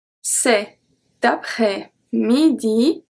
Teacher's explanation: the T from cet is going to be transferred to après-midi. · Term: les liaisons